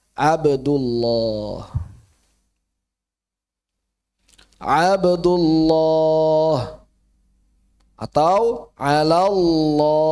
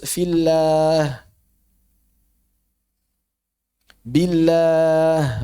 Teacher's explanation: Itu pun dengan syarat sebelumnya fathah atau dhammah. Kalau sebelumnya kasrah kembali tipis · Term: lafdzul jalalah